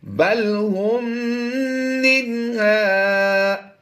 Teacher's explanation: मीम साकिन के बाद दूसरी मीम आ गई तो इदगाम शफ़ी का कायदा होगा, यहाँ पर हमने गुन्ना करके पढ़ना है।